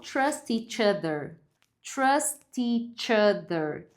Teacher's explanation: Então você pode emendar o som do tch com a vogal que vem depois.